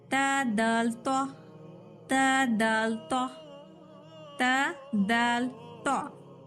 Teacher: जबान आजू बाजू कहीं टच नहीं होगी, जस्ट फ्रंट जबान की फ्रंट टिप जाकर दांतों को टच होगी, मसोड़े ने दांत को टच होगी। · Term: नित्ई